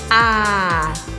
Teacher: percebam como a primeira sílaba é simplesmente a letra A. A, bem aberto.